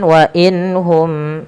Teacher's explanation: jelaskan suara nun ketika ia bertemu dengan ha dan mim ketemu dengan alif. Karena kedua-duanya izhar. Yang satu izhar halqi, yang satu izhar syafawi.